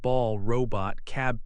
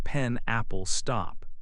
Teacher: Many consonant sounds come in pairs, one voiced and one voiceless. They are made in the same part of your mouth, but one uses your voice and the other does not.